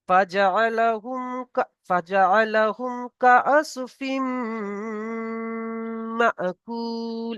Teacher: এটা হচ্ছে ইদগামে নাকিস, তাই এখানে এক আলিফ পরিমাণ নাকে তুলে গণনা করতে হবে।